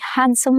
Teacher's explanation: Consonant clusters simplify in spoken English. The D is dropped here. This is a consonant cluster, if you notice.